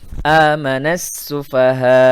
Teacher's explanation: nun pada kata amana langsung masuk ke bunyi sa pada kata as-sufaha. Karena sin adalah huruf dari huruf-huruf syamsiyah. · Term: alif lam syamsiyah